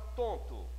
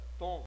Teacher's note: Observe que eu não pronuncio o n ele tem a função única de fazer um som do o sair pela força nasal ele não tem pronúncia então fica Tom nesse caso eu transformei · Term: dígrafos vocálicos